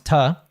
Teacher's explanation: the two reduces to a schwa sound so it becomes ta but then because it's a t between